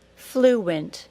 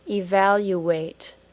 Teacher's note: it isn't always a Y sound that gets added it can also be a W sound